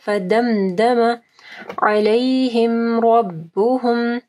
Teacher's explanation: فدمدم علیہم ربهم، را کو ہیوی پڑھنا ہے، میم ساکن کے بعد با ہے، ٹھیک ہے، اخفاء الشفوی آ رہا ہے